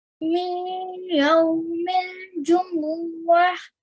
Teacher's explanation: we need to do 2 seconds slight nasal sound. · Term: Idgham Naqis